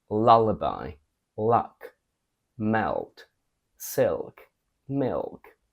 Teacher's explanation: compared to how we pronounce the clear and dark L American only uses the dark L all the time